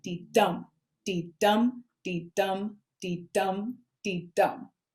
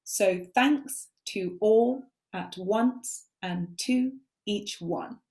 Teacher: So one chunk is a dee-dum. So the first syllable is unstressed, which is like a little light tap. And then the second one is a heavier tap. So it's like dee-dum, dee-dum, dee-dum, dee-dum, dee-dum.